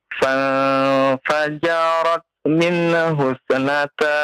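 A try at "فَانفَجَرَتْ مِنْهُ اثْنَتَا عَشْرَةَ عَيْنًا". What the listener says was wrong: Antum termasuk yang sering juga nih nun dikolkolahkan, sa dikolkolahkan ya. Jangan terbiasa membaca seperti itu ya. Fajarat min husnata asyrata aina. Coba ulangi.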